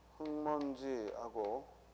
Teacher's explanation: 그 다음 먼지라는 단어가 있고, 이 둘이 만나서 발음을 하면 흙먼지하고 기억이 이응으로 변화되는 걸 보게 돼요. 그래서 이를 우리가 비음화가 일어났다.